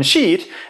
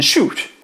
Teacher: a word with a front vowel, like in sheet, as opposed to one with the same consonants but with a back vowel, like in shoot. Can you feel your tongue moving forward and back?